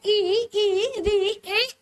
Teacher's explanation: ये वे स्वर होते हैं जिनके उच्चारण में जो हमारे होंठ है वृत्त के समान गोल ना होकर के फैले हुए होते हैं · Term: आवृत्ताकार स्वर